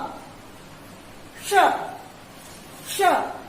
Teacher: श का उच्चारण करते समय जीभ तालु को छूती है, तालु को छूती है, इसलिए इसका नाम है तालव्य श।